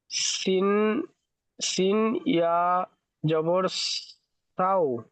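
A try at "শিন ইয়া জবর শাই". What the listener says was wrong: সাও নয়, শিন ওয়াও, শিন ওয়াও হলে তবে সাও হতো। শিন ইয়া জাবার সাই, এটা ইয়াই লিনের পড়া, নরম আওয়াজে তাড়াতাড়ি পড়তে হয়।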